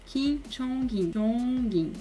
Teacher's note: meio que pronuncia o G do NG com a sílaba seguinte, porque a segunda sílaba começa com uma bolinha, então ela pega o som emprestado da batim anterior, caso tenha.